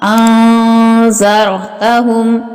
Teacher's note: یہ نون ساکن ہے، اس کے بعد حروف اخفا میں سے ہے، اس لیے اس کے اوپر اخفا غنہ کیا جائے گا، را کو پر اور موٹا پڑا جائے گا۔